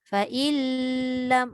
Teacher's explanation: Dia jangan lama. Tekan lam terus jalan.